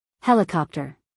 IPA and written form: ˈhelɪkɑːptər (helicopter)